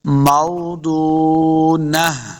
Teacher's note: ضاد حروف مستعلیہ سے اس کو موٹا پڑھیں گے۔ موضونہ، نون کو آخری حرف بنانا ہے، آخر گولتا ہے، اس کو وقف کریں گے، ہا کی آواز آئے گی۔